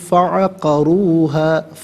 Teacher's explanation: را پر پیش ہے، را کو پر کر کے پڑھیں گے